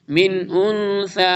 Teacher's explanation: من انثى نون ساکن کے بعد اظہار ہے پھر اخفا ہو رہا ہے نیکسٹ نون پہ